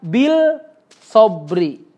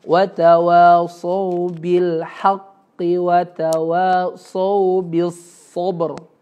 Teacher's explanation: enggak ada bunyi L-nya di situ ya. Alif lam syamsiyah ya.